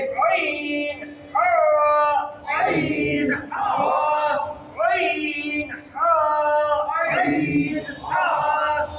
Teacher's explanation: দুই নাম্বার মাখরাজ হলকের মধ্যখান হইতে